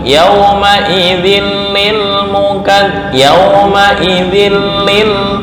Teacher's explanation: Tanwin bertemu lam idgham bila gunnah. Menyatu tapi nggak boleh dengung. Gabung nggak boleh dengung.